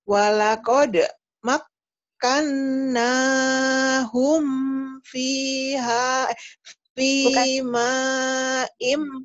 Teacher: Humnya jangan didengungkan karena itu idhar syafawi.